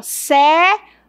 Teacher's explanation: o i é o menos forte e o e é o mais forte. Então aqui eu tenho encontro de uma semi e de uma vogal, ó.